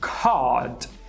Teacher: Pensa no A, de father, só que daí você arredonda O.